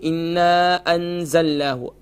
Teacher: ایک تو یہ کہ نون مشدد ہے، کمپلیٹ غنہ ہوگا، اس کے ساتھ الف مدہ ہے، ایک الف کی مقدار کھینچیں گے